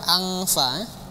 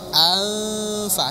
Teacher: tak ada bunyi engnya itu. Karena tak ada hubungannya dengan pangkal lidah.